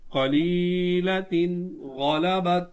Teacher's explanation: قلیلۃ غلبت، یہ یا ساکن ہے، یا ساکن سے پہلے زیر ہے تو یا مدہ ہوگا، اور یہ تنوین ہے، تنوین کے بعد غین حرف حلقی ہے تو یہاں اظہار کا قاعدہ ہوگا